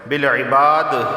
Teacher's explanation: اچھا، واللہ لفظ اللہ سے پہلے زبر ہے تو لفظ اللہ کو موٹا پڑھا جائے گا، بالعباد قلقلہ ہوگا، ٹھیک ہے، کیونکہ دال حروف قلقلہ میں سے وقف کی صورت میں یہاں قلقلہ ہوگا